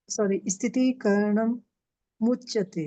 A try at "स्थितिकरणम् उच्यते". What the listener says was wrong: स्थितिकरणम उच्यते, क्योंकि करणम में आपने माओ का उच्चारण कर लिया ना, स्थितिकरणम उच्यते।